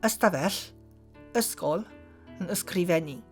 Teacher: It is the added y at the beginning. Welsh didn't allow the sequence of st or sk at the beginning of the word, which Latin did, so it had to add an extra vowel at the beginning when the borrowing happened.